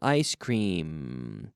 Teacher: The secret is you have to close your lips with the letter M. Otherwise, it will sound like an N.